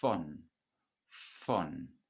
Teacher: Notice that a V at the beginning of a word in German is pronounced like an F